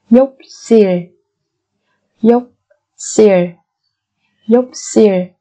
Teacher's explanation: Cái phụ âm xìl ở đây, chúng ta sẽ biến nó thành phụ âm căng là sang xìl.